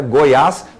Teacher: o assento Agudo como no termo aqui ao lado né Goiás você consegue perceber que o assento Agudo reflete o som aberto